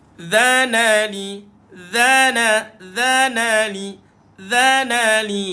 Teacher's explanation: dha hujung lidah dikeluarkan, duduk kat bawah gigi atas. Dhanali, dhanali, 4 atau 5 harakat.